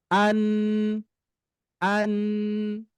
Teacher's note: sifat nun itu adalah ketika disukunkan dia mendengung dua ketukan huruf. Kalau saya ketuk ya, an, nah dua ketukan.